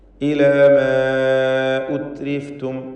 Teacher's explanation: ഇവിടെ അലിഫിനെയും മദ് മുൻഫസിൽ ജായിസ് നൽകി ദീർഘിപ്പിക്കേണ്ടതാണ്.